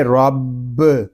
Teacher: را پر ہوگا کیونکہ را کے اوپر زبر ہے، آگے با مشدد ہے، اس کو جماؤ کے ساتھ ادا کریں گے. رب، اس کو رب اس طرح نہیں پڑھیں گے، اس کو پڑھیں گے رب.